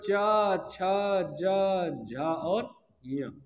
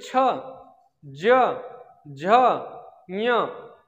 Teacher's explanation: इनका उच्चारण स्थान तालु, ऐसे ही नहीं बोल रहे, तालु से बोल के देख लो, आपकी जीभ अपने आप पहुंच जाएगी, तालु कहाँ है बता देगी। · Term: चा वर्ग